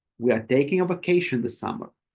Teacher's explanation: can feel how my voice is going normal normal normal then on a focus word in this case a vacation that's something I want to highlight my voice goes up and then goes down to the normal voice